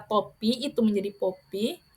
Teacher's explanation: Kemudian kata topi itu menjadi popi, T berubah menjadi P, stooping atau labialisasi karena diganti dengan bunyi labial.